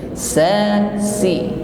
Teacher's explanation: Huruf sin lidahnya tetap anteng di bawah, istifal. Maka suara yang keluar ini ringan, sa, lurus saja.